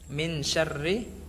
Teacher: Karena sya masuknya ke dalam huruf ikhfa, maka dibacanya disamarkan. Nunnya disamarkan dan langsung membentuk, mulutnya langsung membentuk huruf sya.